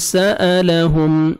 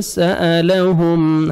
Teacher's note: میم ساکن کا اظہار ہے جلدی پڑھیں گے